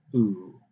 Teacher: The velum is open or closed for different sounds. For the ooh, it's closed. And here we've got a rounding of the lips, tightening and rounding, ooh.